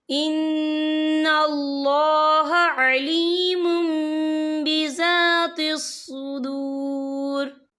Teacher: हम यहाँ मीम का तलफ़ुज़ करेंगे, पिछले मीम को अगले मीम के साथ मिलाकर पढ़ेंगे और हम यहाँ गुन्ना भी करेंगे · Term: इकलाब